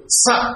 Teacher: స అనండి దంతములతో పలుకుతాం గనుక ఇది దంత్యము అని పిలవబడుతుంది